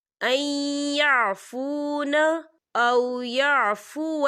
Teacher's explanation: یا دیکھیں این یہاں نون ساکن ہے اور نون ساکن کے بعد یا آ رہا ہے، اور یا جو ہے حروف یرملون میں سے ہے، تو یہاں پر ادغام ہوگا، تھوڑا سا غنّے کے ساتھ پڑھیں گے